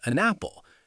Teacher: So, an apple becomes an apple because that n sound jumps over to connect with the a · That's when the final consonant of one word links to the initial vowel of the next word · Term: catenation